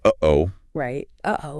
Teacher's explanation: that little catch in your throat, the hard stop between the and the o. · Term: glottal stop